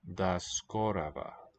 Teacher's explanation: this written G is pronounced as a V